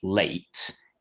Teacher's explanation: changes a little bit during the time that i'm saying it it starts a bit like a and it finishes a bit like e and it kind of glides between the two · we call that a diphthong basically kind of two sounds that kind of glide from one to the other but function as a single a single unit